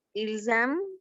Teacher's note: cuando se conjuga en tercera persona, la sílaba ENT no se pronuncia